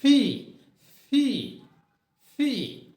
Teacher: সঠিক উচ্চারণ ইজ ফি ফি ফি। মুখ দিয়ে ফোর্সে জোর একটা বাতাস বের হয়